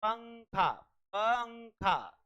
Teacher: पहले प आ रहा है फिर नासिक ध्वनि से उच्चारण हो रहा है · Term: अनुस्वार